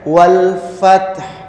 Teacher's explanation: Nah, ini pada waktu mengucapkan wal fath. Jadi taknya disukun terus seolah-olah akan mengucapkan huruf ha ya. Wal fath gitu ya.